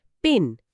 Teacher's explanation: হাতের তালুটা মুখের একদম সামনে এনে যদি ইংরেজিতে পিন শব্দটা উচ্চারণ করা হয়, তাহলে হাতের তালুতে বাতাসের একটা ছোট ধাক্কা বা পাফ অফ এয়ার অনুভব করা যাবে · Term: অ্যাসপিরেশন